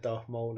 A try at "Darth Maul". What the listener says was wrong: Did you say Darth Moan? Oh, you just overpronounced the L and it turned into an M in my ear.